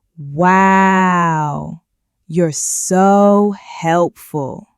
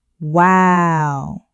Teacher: A draw is when the person speaks very slowly and makes the vowel sounds very long